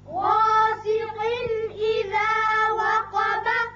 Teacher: قاف کے نیچے دو زیر تنوین ہے یعنی نون کی آواز نکلتی ہے، اب اس کے بعد حروف حلقی میں سے حمزہ بشکل الف آ گیا لہذا یہاں اظہار حلقی ہوگا یعنی قاف کی تنوین کا نون ظاہر کر کے پڑھیں گے۔